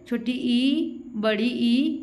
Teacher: तालव्य स्वर जो हम अपने तालु से बोलते हैं, जैसे छोटी ई, बड़ी ई, ये कहाँ से बोली जा रही है, तालु से उच्चारण हो रहा है इसका।